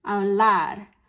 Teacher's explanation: that spoken stress is on the last part of the word